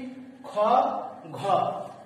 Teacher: খ এবং ঘ উচ্চারণ করার সময় নিঃশ্বাস জোরে নেওয়ার প্রয়োজন হচ্ছে, তাই এগুলোকে বলা হচ্ছে মহাপ্রাণ ধ্বনি।